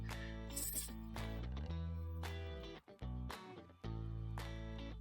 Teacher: esticar os lábios como se estivesse sorrindo e ela vai encostar a língua no dente inferior